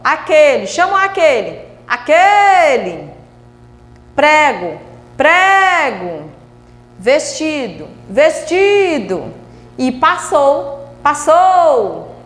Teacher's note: Então eu tenho aquele, sílaba tônica, que. Prego, sílaba tônica, pré. Vestido, sílaba tônica, ti. E passou, sílaba tônica, sou.